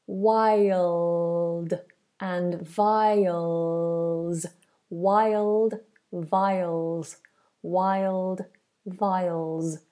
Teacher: Also be aware of this dark L. Dark L is the tongue up on the roof of the mouth.